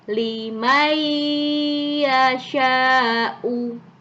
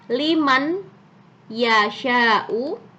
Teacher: Perhatikan, yang awalnya ini kalau dibaca liman yasha'u, karena ini ada idgham di sini, ada nun sukun bertemu dengan ya, maka nunnya harus dibaca lebur, dihilangkan nunnya, masuk ke ya